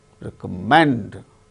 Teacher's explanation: Recommend, third syllable gains stress in the case of the word.